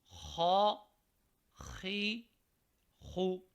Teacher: ان کو کہتے ہیں حروف حلقی، اس وجہ سے کہ ان کا مخرج ہے حلق، حلق سے یہ ادا ہوتے ہیں۔